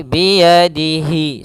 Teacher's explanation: di sini ada mad tabi'i yaitu kasrah bertemu ya, panjangnya 2 harakat